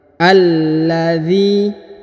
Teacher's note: perhatikan huruf a langsung sambung masuk ke huruf lam yang berharokat tasdid. Alladzi, kemudian huruf zi dipanjangkan 2 harokat karena di depannya terdapat ya sukun ya.